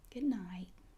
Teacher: Good night. And you don't really have to pronounce the T. You can say good night and just leave the T off.